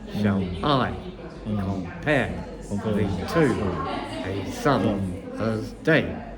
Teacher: You see, it goes unstressed, stressed all the way through.